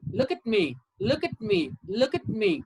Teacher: i'm not putting a stress on at me